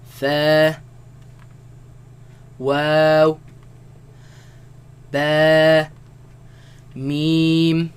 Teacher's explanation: between these letters well their makharaj their home and that is they all come from the lips